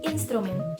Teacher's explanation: terdapat tiga fonem konsonan STR yang terletak berdampingan di dalam satu silabel yang sama. Maka dari itu, ini disebut gugus fonem konsonan.